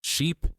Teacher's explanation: Sheep has a longer, tenser vowel, with lips pulled a little wider.